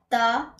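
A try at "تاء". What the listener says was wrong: ता थोड़ा सा खींच इसमें सिटी की आवाज नहीं आनी चाहिए।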